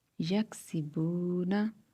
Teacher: واو جو ہے حروف مدہ میں سے ہے تو ہم تھوڑا سا اسے لمبا کریں گے۔